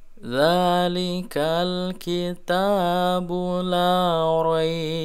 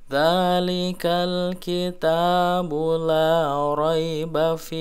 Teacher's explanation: Nah, roinya menjadi madlin, ya, panjangnya 6 harokat.